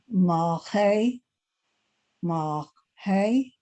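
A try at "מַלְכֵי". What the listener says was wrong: Che. You got to hear that guttural. Che.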